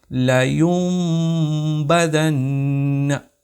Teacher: تو ہم نے یہاں پر کیا کیا، لَيُنبَذَنَّ، ایسا نہیں پڑھا، لَيُنبَذَنَّ نہیں پڑھا، ہم نے نون کو بالکل ہی اسکپ کر دیا اور نون کے بدلے اس میم کو ہم نے یہاں پر پڑھ دیا، لَيُنبَذَنَّ۔ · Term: اقلاب